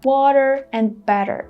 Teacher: Americans pronounce the letter T as D, like in water and better.